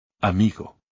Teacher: the stress goes on the second to last syllable because the word ends in a vowel n or S and there is no accent